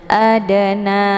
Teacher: dinamakan dengan qolqolah cara bacanya dipantulkan dengan pantulan ringan